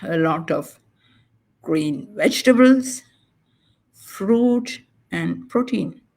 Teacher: if you have multiple items in a list it will go up up and then down